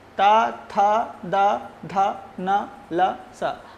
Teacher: दंत्य स्थानीय वर्ण कौन कौन से हैं, ता, था, दा, धा, ना, फिर उसके बाद ला और शा का उच्चारण स्थान दंत होता है